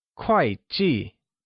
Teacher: quite and G are both pronounced with a falling tone also known as the fourth tone